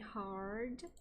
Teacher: variedade rótica do general American, que o R, eh, o rótico é retroflexo